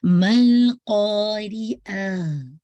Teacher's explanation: इंशाल्लाह रॉ की कसरा शार्प रखिएगा